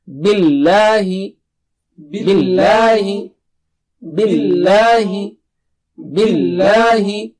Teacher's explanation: Don't make the lam thick here. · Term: just the normal lam